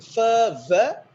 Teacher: labiodentals, the lower lip and upper front teeth